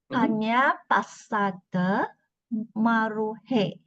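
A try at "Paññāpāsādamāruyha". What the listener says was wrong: There's no E. Maruhe.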